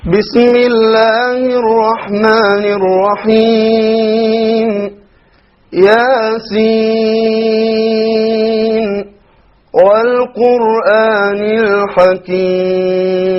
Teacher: So we see he did a mad of 5 on Al-Hakim.